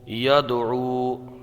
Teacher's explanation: یہاں دال میں قلقلہ ہوگا